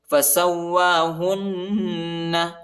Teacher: واو کے اوپر جو ہے کھڑا آیا ہے، اس کو تقریباً 1 الف کی مقدار تک کھینچنا ہے۔ فسوا، فسوا، فسواہن، ہا کو نون کے ساتھ ملائیں گے اور غنہ کرنا ہے۔